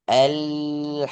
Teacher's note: Masih kepental. Jangan sampai keluar pantulan dari huruf lam yang dibaca. Tapi tahan sejenak, tahan satu harokat, tahan satu ketukan. Alhamdu. Masih sedikit keluar.